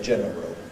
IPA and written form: ˈʤenərəl (general)